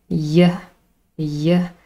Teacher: i can feel how my tongue is elevated in the middle of my mouth yeah and then of course the vocal chords vibrate because this · the vocal chords vibrate because this is a voiced sound · Y is formed because the tongue comes close to the roof of the mouth. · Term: voiced palatal approximant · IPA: /j/